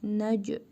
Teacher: Nə. Cim hərfinin üzərində cəzm var. Qalqala edərək tələffüz edirik.